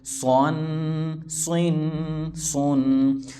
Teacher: صاد پر یعنی موٹا پڑھیں گے، سین کی طرح باریک نہیں. صاد دو زبر سن، صاد دو زیر سین، صاد دو پیش سن، سن سن سن.